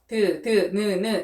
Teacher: 혀 끝이 윗 잇몸 뒤에 느 이렇게 닿으면서 소리가 나는 거죠. 얘네들을 우리는 뭐라고 말을 하냐면 잇몸 소리, 한자어로는 치조음이라고 말을 합니다.